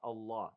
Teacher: But the ha in the end is not heavy. It's light.